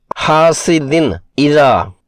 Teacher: تنوین کے بعد حمزہ حرف حلقی کی وجہ سے اظہار ہوگا